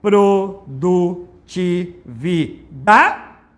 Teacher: Mais forte é o da, então é uma paroxítona.